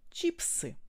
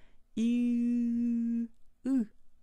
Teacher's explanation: Et après, vous reculez bien votre langue, la racine de votre langue, vous reculez en arrière, très en arrière, comme vous le faites quand vous dites OU. Donc vous gardez les lèvres pour I, mais vous reculez la langue en arrière et ça vous fait I, U, le son U.